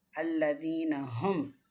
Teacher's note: இங்கே வந்து லாம கிளியராக ப்ரொனவுன்ஸ் பண்ணணும். தீன நேச்சுரல் மத்து 2 கவுண்ட்டுக்கு நீட்டணும் · இங்கே வந்து மீமை குன்னா பண்ணிடக்கூடாது